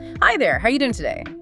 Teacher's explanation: said with warmth. Maybe a slight rise at the end.